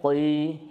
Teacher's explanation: huruf qaf, perhatikan dia nggak terlalu tebal